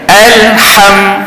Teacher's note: pastikan huruf lam yang mati kita betul-betul kita sampai ke lam tu kita break ataupun kita betul-betul matikan dia